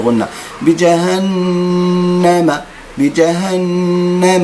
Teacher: يؤثر في الكلام اذا هو علاج الاقلاب عند علم تجويد فاصبح تقلب النون الساكنه الى حرف ميم لتخفيف النطق لتيسير النطق